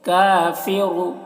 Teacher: کاف کو باریک اور را کو موٹا کر کے پڑھیں گے